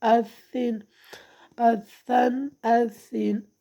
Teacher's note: سختی کے ساتھ ذرا رک کر ادا کرنا ہے آپ نے، تشدید کو تیزی کے ساتھ نہیں پڑھنا